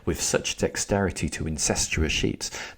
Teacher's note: do you see the repeated S sounds, the sibilants?